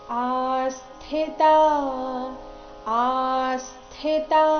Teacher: ಆ ದೀರ್ಘ ಬಂದು ಸೌಮ್ಯ ಆಘಾತ ಮುಂದೆ ಸ್ಥಿ ಇದ್ದ ಕಾರಣ